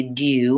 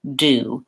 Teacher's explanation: you do but that's the British pronunciation and an American English we don't say that little ya sound we don't say do you we say do the nice thing